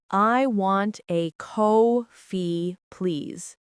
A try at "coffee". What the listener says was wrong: But here's something to notice. In English, coffee sounds like coffee, not ko-fee. The first part is longer, like coffee.